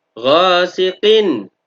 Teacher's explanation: Ghasiqin, ghinnya berharokat fathah, diikuti alif, namanya bacaan matobi'i. Ghasiqin, ada tanwin bertemu dengan hamzah, namanya bacaan idza, dibaca jelas, tidak berdengung sama sekali. Idza, zalnya panjangnya 2 harokat, maka dinamakan bacaan mad asli.